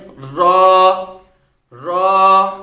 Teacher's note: را زبان کی نوک اور مقابل کے تالو سے، یعنی کہ یہاں زبان کی نوک ہوتی ہے، تو یہ مثال کے طور پہ یہ زبان اور زبان کی جو نوک ہے، اس زبان کی نوک کے بالکل مقابل کا جو تالو ہے، زبان کے نوک کو اوپر تالو کے ساتھ لگائیں گے تو وہاں سے را، را ادا ہوگا۔